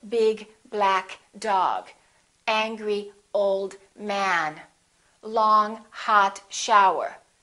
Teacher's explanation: we emphasize the first adjective and the noun.